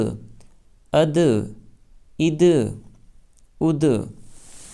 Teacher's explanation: حروف قلقلہ میں سے، نیچے لکھا ہوا بھی ہے قلقلہ، تو قلقلہ کے اکشروں میں سے ہے دال، اس لیے دال کی ادائیگی میں زبان اپنے مخرج پر لگ کر اچھل جائے گی